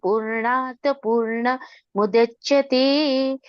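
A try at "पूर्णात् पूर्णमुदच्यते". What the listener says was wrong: Purnat Purnam udachyate. Don't put ma there. Purnat Purnam udachyate.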